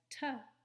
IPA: t